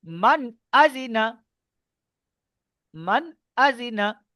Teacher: যে নুন হুজুর, সাকিনের পরে হুরুফে হালকি 6টি অক্ষরের মধ্যে থেকে হামজা এসেছে, তাই নুন সাকিনের আওয়াজকে বিনা গুণায় জাহির করে তাড়াতাড়ি পড়তে হবে